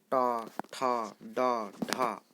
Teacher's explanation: टवर्ग र हलंत तथा मूर्धन्य स का उच्चारण स्थान मूर्धा है, अतः यह मूर्धन्य वर्ण कहे जाते हैं।